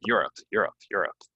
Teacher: it's almost like you're saying you're and up really quickly but with the stress on the first part